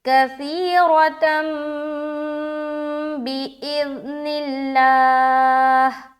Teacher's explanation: اس نون کو میم سے بدل کر غنہ اخفا کے ساتھ پڑھیں گے، اور یہ ہے اقلاب کا قاعدہ